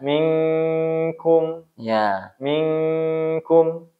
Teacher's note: Minkum. Dibaca dengan gunnah dan ikhfa seharusnya kan?